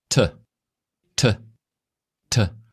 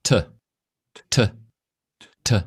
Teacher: To produce that sound that we heard, which is t, we lower our bottom lip. The tip of our tongue is brought forward to behind the teeth at the front of the palate.